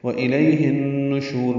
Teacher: وَإِلَيْهِ النُّشُورُ میں واو ہونٹو کی نا تمام گلائی سے ادا کریں گے. حمزہ اقصی حلق سے ادا کریں گے. لئی یا لین ہے، نرمی سے پڑھیں گے.